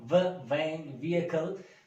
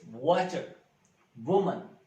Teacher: when we articulate this sound vain, vehicle, our lips are flat. But when we produce this wo, our lips are round. We have to round our lips.